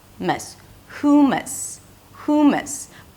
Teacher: It's an H sound, then the U as in food, hu, and the second syllable is mus, mus, hummus, hummus.